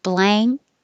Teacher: your tongue goes up in the back for an ang. Blank, and then pull it down for a K.